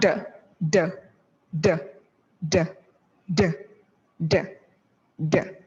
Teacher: The D sound is voiced. Make sure the tip of the tongue presses against the ridge and not against the teeth. Dapat hindi siya dito sa ngipin.